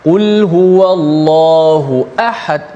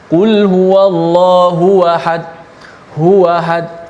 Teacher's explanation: Jangan baca hamzah tu dia seakan-akan seperti tashil ataupun tak jelas tahqiq huruf hamzah tu